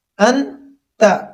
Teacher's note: یہاں نون ساکن ہے اور نون کے اوپر غنہ ہوگا۔ انت، نون ساکن کے بعد تا ہے اور حروف حلقی میں سے تا نہیں ہے، اس لیے یہاں پر غنہ ہوگا۔